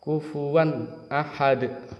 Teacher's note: tidak boleh dengung tidak boleh samar harus jelas n-nya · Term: izhar